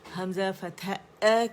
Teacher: حمزہ بہت احتیاط سے آپ نے فارتھروٹ سے ادا کرنا ہے, اس کو آپ نے الجوف سے ادا نہیں کرنا